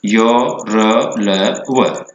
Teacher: इन वर्णों का उच्चारण करते समय जिह्वा का थोड़ा सा टच उस वर्ण के उच्चारण स्थान से होता है। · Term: ईषत् स्पृष्ट प्रयत्न